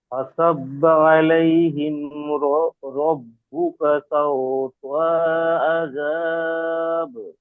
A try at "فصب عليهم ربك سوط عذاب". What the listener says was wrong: তাও তো টানা হয়ে যাচ্ছে। তো এর উপরে কি আছে? জাবার হারাকাত। فصب عليهم ربك سوط عذاب।